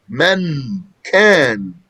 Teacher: We're going to hide this noon and just get the kaf ready. And we're going to make a ghunnah from the nose as evidence for the noon that we are hiding. · The noon comes from the front of the tongue, and the kaf comes from the back of the tongue. Men can. We're going to hide this noon and just get the kaf ready. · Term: hiding the noon sakina